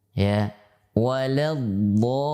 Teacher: tidak ada nafas yang dihentakkan pada saat mengucapkan huruf dhad, maka dia adalah huruf jahar